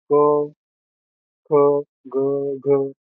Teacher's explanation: तर इथे क उच्चार करताना आपल्या कंठातून निघतो. क, ख, ग, घ म्हणून यांना कंठस्थ म्हणतात. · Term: कंठस्थ व्यंजन